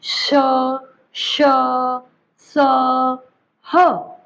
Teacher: ठीक है, ऊष्म व्यंजन इन्हें इसलिए कहा जाता है क्योंकि ये मुंह में जब बोलते हैं ना, तो जो मुंह के अंदर हवा होती है उससे थोड़े घिसटते हुए, टक्कर खाते हुए जैसे हम कहेंगे, वैसे ये बाहर निकलते हैं और हल्की सी सीटी की आवाज भी सुनाई देती है जब आप इन अक्षरों को बोलेंगे